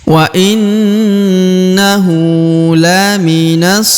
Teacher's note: Perhatikan huruf na yang berharokat tasdid ya, ditahan, ditekan lalu didengungkan 2 harokat ya.